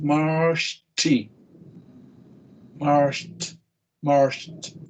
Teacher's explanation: Como una T al final, explosiva